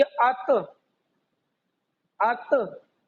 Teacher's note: हमारी जुबान की नोक जो है, ये दांतों की जड़ जो है हमारे ऊपर वाले दांतों की, उससे मिलाकर हमारा ता अदा होता है। · हमजा लगा लीजिए, उसके बाद में आप यानी कि पहले आ लगा लीजिए, उसके बाद में ता। जब हम बोलेंगे तब हमारी जो जुबान की नोक जो है ऊपर वाले दांतों की जड़ में जाकर यानी कि लगनी चाहिए। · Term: ता का मखरज